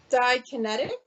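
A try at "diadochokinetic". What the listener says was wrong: Yes. I think you might have missed a syllable, but yes. Didokinetic. Diodocokinetic.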